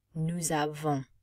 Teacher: Notice we can't pronounce the final consonant. And then, because there's no E to make the N pop, it is going to not be pronounced, but instead nasalize the O sound.